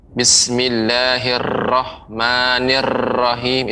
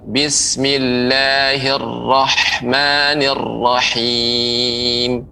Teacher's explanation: pengucapan huruf ra, ya, dia tidak boleh tipis. Bismillahirrahmanirrahim itu keliru, tapi tebal.